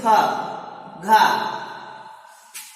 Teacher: दूसरा है महाप्राण, ऐसे व्यंजन वर्ण जिनका उच्चारण करने में हमें अधिक प्राणवायु का प्रयोग करना पड़ता है, वह महाप्राण कहलाते हैं।